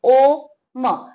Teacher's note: जेव्हा आपण ओ म्हणतो तेव्हा आपलं ओठांचा एक चंबू होतो. म म्हणतो तेव्हा दोन्ही ओठ एकत्र जोडले जातात, म.